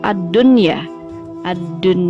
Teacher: cara membacanya juga tidak mendengung seperti kaidah idgham bighunnah melainkan cara membacanya adalah jelas